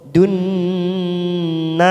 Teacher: Nun yang bertasdid, dun masuk pada huruf nun, namanya bacaan gunna. Kita tekan 3 ketuk, siap masuk pada huruf nun.